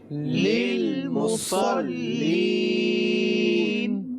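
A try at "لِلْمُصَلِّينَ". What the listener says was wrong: اچھا، آپ نے یہ سنا للمصلین، صاد پڑھا گیا، سین نہیں پڑھا گیا. للمصلین تو یہ ادائیگی غلط ہو جائے گی. صحیح، صاد کو پر پڑھنا ہے.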